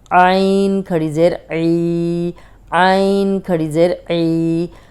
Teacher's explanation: حلق کی طرف پیچھے زبان کو حلق کی طرف دبائیں تو عین نکل آئے گا